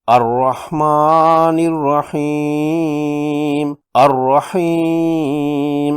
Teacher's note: ہا کی زیر اور یا مجزوم سے یا مدہ ہے، میم سکون میں بدل جائے گی۔ وقف کرنے پر اس طرح مد کرتے ہوئے پڑھیں گے الرحمن الرحیم، الرحیم۔ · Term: مد عارض